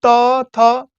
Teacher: त थ दांत से सट रहा है